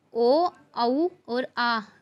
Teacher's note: कंठ प्लस ओष्ठ से ओ, औ और आ उच्चारित होते हैं।